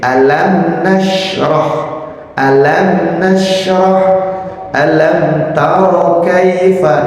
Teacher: Pengucapannya dalam mim harus tampak jelas, tanpa gunnah ketika bertemu dengan huruf fa, wawu misalkan ya. Nah, mim sedikit pun tidak boleh terpengaruh makhrajnya fa. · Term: Idhar syafawi